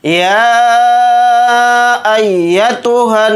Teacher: नून के ऊपर तशदीद है तो नून के अंदर गुन्ना करेंगे